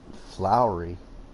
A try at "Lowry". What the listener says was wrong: Sounds like you're saying Flowery when you say the one guy's name. Yeah, it sounds like Flowery half the time.